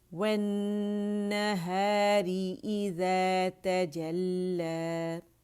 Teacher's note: اور لام مشدد میں ٹکنا نہیں ہے، جماؤ دینا ہے